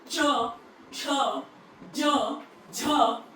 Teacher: मैं अपने पैलेट को, रूफ ऑफ द माउथ, तालू जिसको बोलते हैं, उसको टच करके बोल रही हूँ।